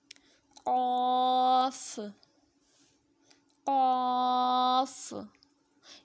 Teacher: زبان کی جڑ جو حلق کے پاس ہے، جب اوپر کے تالوں سے لگے تو پھر قاف ادا ہوتا ہے، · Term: موٹا قاف